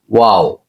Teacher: ওয়াও উচ্চারণ করার সময় দেখবেন আপনার দুই ঠোট গুল করিয়া আমাদেরকে ওয়াও উচ্চারণ করিতে হয়